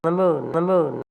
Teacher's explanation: there's really no perceptible goose fronting for me